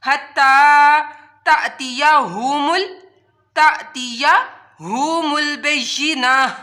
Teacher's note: हत्ता ता के ऊपर खड़ा मद है, इस वजह से यहाँ भी इसको लंबा किया। हत्ता तातिया हुमुल बय्यिना, जब ता गोल ता हो तो जब रुकते हैं तो ये हा में बदल जाती है, ता नहीं पढ़ी जाती तो बय्यिना, बय्यिना।